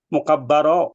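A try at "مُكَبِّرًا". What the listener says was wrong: harokatnya di bawah tasydid berarti dia kasrah. Mukabbiran.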